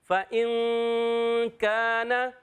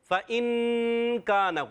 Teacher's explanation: حمزہ کو نون سے ملائیں گے, نون ساکن کے قاعدوں میں سے قاعدہ کہ نون ساکن میں کاف آ گیا, حرف اخفا میں سے کاف, تو اس لیے یہاں پر اخفا ہو جائے گا. اخفا والا غنہ کریں گے, ناک میں آواز لے جائیں گے, نون کو چھپا کر ادا کریں گے. آواز آئے گی فَإِن كَانَ.